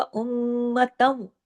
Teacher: ता दो जबर तन की तनवीन खत्म हो गई क्योंकि आगे वाव पे तशदीद आ गई, इदगाम हो गया